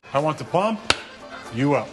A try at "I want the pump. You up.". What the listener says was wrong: No. You want the pump. You up. Like that. You put the emphasis on the wrong syllable.